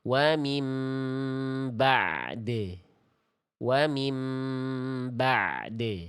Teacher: Ain punya sifat mengalir suara sedikit. Jadi dua-duanya tunaikan bacanya bukan mim ba'd.